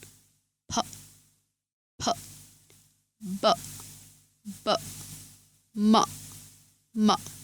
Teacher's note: খেয়াল করুন, আপনি যখন এই 3টি শব্দ উচ্চারণ করবেন তখন আপনার দুটো ঠোঁট একটি অপরটার সাথে মিলে বাতাসটাকে আটকে রাখবে এবং ঠিক পরের মুহূর্তেই সজোরে বাতাস বের করে এই শব্দগুলো উচ্চারণ করতে হয়। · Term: বাইলিবিয়াল সাউন্ড